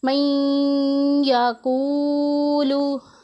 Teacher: یا کے اوپر ہم نے زیادہ زور دینا ہے، نون کے اوپر کم زور دینا ہے، اور اس میں غنہ بھی کرنا ہے۔ من یا کے اوپر زیادہ زور دینا ہے کیونکہ وہ مشدد ہے، اور غنہ بھی کرنا ہے۔